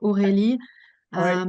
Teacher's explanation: it's a French R, not rolled. It's more from the back or of the throat.